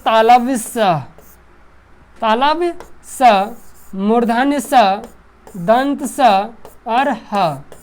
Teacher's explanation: जिसके उच्चारण में जो है घर्षण पैदा होता है उसको कहते हैं उष्ण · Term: उष्ण व्यंजन